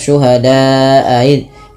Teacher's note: cukup hanya Syuhada aiz tapi dia harus dipanjangkan empat harakat kemudian hati-hati jangan menyeret pada lafal aid ya bedakan antara a dan I